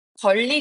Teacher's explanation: 리을이 니은 뒤에 오는 경우도 있는데요. 권리 같은 경우에는 종성 니은이 초성 리을 만나 리을로 바뀌고 있습니다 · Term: 유음화